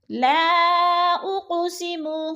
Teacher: لا پہ تو مد منفصل ہو رہی ہے، 4 الفی مد ہے، 4 حرکات کے برابر ہم نے اس کو کھینچ کر پڑھنا ہے، کیونکہ حروف مدہ کے بعد حمزہ دوسرے کلمے میں ہے تو مد منفصل ہے۔